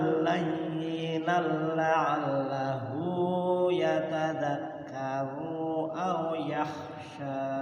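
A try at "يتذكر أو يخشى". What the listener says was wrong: Ru-nya pendek. Yatadhakkaru aw yakhsha.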